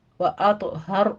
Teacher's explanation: ساکن کا قاعدہ پھر اظہار شفی ہو رہا ہے، وَأَطْهَرْ میں طا بھی پر ہے، را بھی پر ہے، طا کے اوپر قلقلہ کریں گے